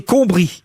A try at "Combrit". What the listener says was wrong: Combrite. On prononce le T.